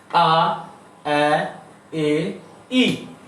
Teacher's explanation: ঠোঁট একদম প্রসারিত হচ্ছে আর সাউন্ড একদম ঠোঁটের কাছে চলে আসছে, সম্মুখে চলে আসছে।